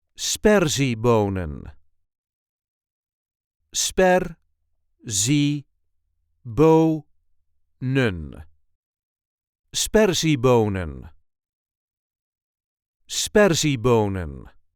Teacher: There is a light emphasis on the first syllable.